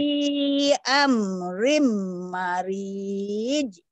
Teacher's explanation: Iya, ri-nya panjang, mahnya pendek.